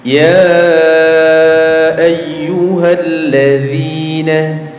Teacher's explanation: perhatikan dzi-nya, dzalnya tipis ya, jangan ditebelin